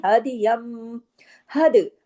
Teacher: دال پہ دیکھیے کلکلہ کرنا ہے، دال جزم کے ساتھ ہے. میں نے آپ کو بتایا تھا کہ کتب جد کے جو حروف ہے قاف توبہ جیم دال، یہ دال بھی کتب جد کا لیٹر ہے نا، تو جب بھی جزم کے ساتھ آئے گا اس پہ کلکلہ ہوگا.